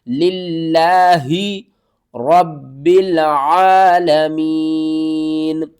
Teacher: لفظ اللہ سے پہلے جب زیر ہوگی تو ہم لفظ اللہ کو باریک کر کے پڑھیں گے